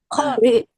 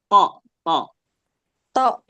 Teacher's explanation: ujung lidah bertemu akar atau tempat tumbuhnya gigi seri atas